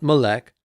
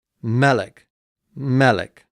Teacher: but the accents on the first syllable